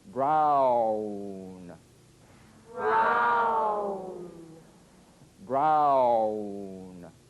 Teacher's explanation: if you move quickly from the widest to the smallest opening, ow, as in brown